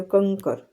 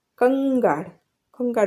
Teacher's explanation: ક ખ ગ ઘ, ને એનું અનુનાસિક છે આ અંગ, અંગ, એ રીતે પ્રોનાઉન્સ થાય છે